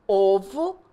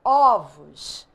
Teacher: plural o som Muda então a gente chama isso de metafonia mudança de timbre no singular o som é fechado ovo no plural o som é aberto · No singular, o som é fechado, ovo. No plural, o som é aberto, ovos.